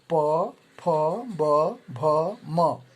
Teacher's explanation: प, फ, ब, भ, म पवर्ग ये ओठ से यानी दोनों ओठों इनके उच्चारण में दोनों ओठ आपस में संयुक्त होते हैं